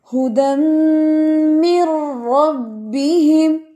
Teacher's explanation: ھدی یہاں پہ ناک میں آواز کو لے کے جانا ہے